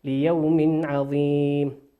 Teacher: وقوله سبحانه وتعالى ليوم عظيم تنوين أتى بعده حرف العين والعين من حروف الإظهار، تظهر كما هي ليوم عظيم لا تخفى ولا تضغم ليوم عظيم.